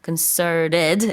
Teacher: 강세도 두 번째 음절에 들어가서 concerted 이렇게 발음을 하셔야 돼요. T 발음은 물론 뭐 북미권에서 안 해도 됩니다. concerted 이렇게 North American accent로 할 수 있고.